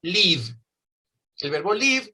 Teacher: ese sonido final es un voice sound porque hay vibraciones